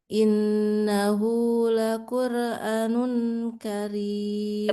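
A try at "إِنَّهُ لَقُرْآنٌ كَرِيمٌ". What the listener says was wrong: Panjang, A-nya juga panjang. Innahu laqur'anum, 2 harkat.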